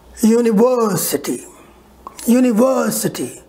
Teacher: one syllable a lower another one is little higher for example in the word university as i told you there are five syllables one syllable will be higher and the other four will be lower · the third one will will be very high and the first second and fourth fifth will be lowered